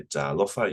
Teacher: It's the macron, and second to last syllable is emphasized.